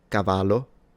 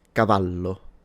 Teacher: the double L in Italian is just pronounced as a longer / stronger version of the single L